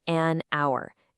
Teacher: The letter H is silent, right? So the first sound you actually hear is ow, a vowel sound.